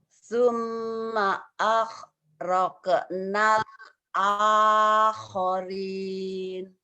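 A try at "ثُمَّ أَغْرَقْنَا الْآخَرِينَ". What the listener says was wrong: Summa G-nya agak pecah, jangan pecah. Agnini, Agnes, Summa aghraqnal akharin. Summa aghraqnal akharin.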